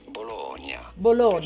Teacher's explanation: In Italy, in Italian, the name of this city is normally said as Bologna. You do want to stress on the middle syllable.